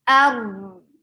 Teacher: There will be tawassut on raw, medium flow of sound. This is medium flow of sound.